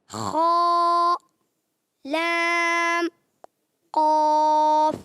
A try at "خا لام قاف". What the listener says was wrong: تھوڑا سا لام کو اور کھینچیں۔ خا، لام، قاف۔